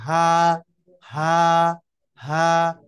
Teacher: এক আলিফ টেনে কণ্ঠলী শুরু থেকে উচ্চারণ করতে হবে